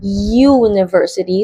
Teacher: ang unang sound na maririnig natin ay yi. Consonant yun, represented by Y kapag tinranscribe natin.